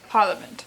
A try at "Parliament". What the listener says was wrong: Parliament. There's no R. Pretend there's no R there.